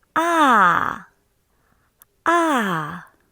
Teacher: Now let's come to the fourth tone. It's a full falling tone.